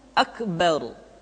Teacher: huruf ro mesti dibaca tafkhim atau dibaca dengan suara yang tebal